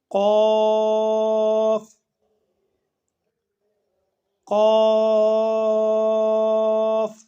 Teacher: زبان کی جڑ کوے کے قریب جب نرم تالو سے لگے، یہاں سے قاف ادا ہوتا ہے۔